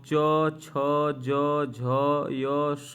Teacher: च छ ज झ य स का तालव्य से या तालू से उच्चारण होगा